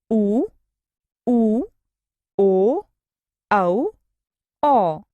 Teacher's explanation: इनके उच्चारण में होठों का आकार गोल हो जाता है। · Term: वृत्ताकार स्वर